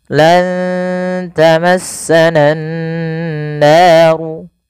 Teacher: Karena pada lafal ini ada bacaan ghunah yaitu dengan menahan suara nun dan memasukkan ke rongga hidung kita. Lan tamassananaru naru mad thaabi'i dua harakat. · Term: gunnah